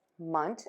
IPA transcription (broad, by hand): əˈʤʌstmənt